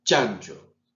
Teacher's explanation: Se produce un cierre y una apertura no intempestiva, sino lenta, que produce como una especie de fricción. Por eso es africada.